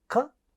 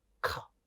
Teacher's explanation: It's not like kha. Ka is unaspirated, kha is aspirated. It is not voiced.